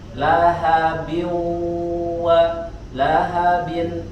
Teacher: huruf h, ya, sempurnakan dari aqsad halqi, dari pangkal tenggorokan,